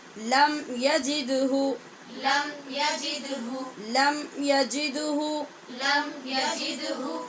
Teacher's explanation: دال پہ یہاں قلقلہ ہو رہا ہے اور لم کی میم پہ اظہار شفوی